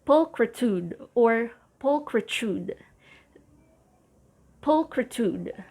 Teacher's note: the main stress is on the first syllable